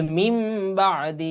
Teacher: এই নুনটা নুনে সাকিনের পরে যেহেতু বা আসছে এইজন্য এখানে এই নুনটা মিমের উচ্চারণ হচ্ছে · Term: ইকলাব